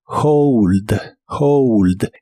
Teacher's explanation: La H se pronuncia como una J suave de español y la O como OU. Hold. hold.